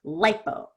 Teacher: And when I have the I before the P, I don't want the I to be, you know, very stretched out. So it's kind of quick, lipo.